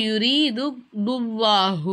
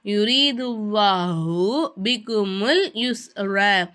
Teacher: அல்லாஹ் அப்படிங்கிற வார்த்தையை வாய் நிறைய காற்று வச்சு உச்சரிக்கணும்.